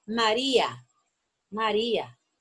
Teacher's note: el diptongo se rompe por la tilde en la vocal débil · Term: se rompe el diptongo